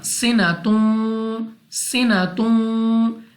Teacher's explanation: Then we have waw, and before waw we have double dhamma, so due to this we will read with ghunna, sinatun, sinatun.